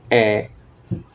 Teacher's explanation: জীব একটু উঁচু হয় তবে সামনের দিকে থাকে জীব এবং ঠোঁট প্রসারিত হয় এবং বেশি খুলে ঠোঁট অনেকটাই খুলে এ যখন উচ্চারণ করা হয় তখন একটু বেশি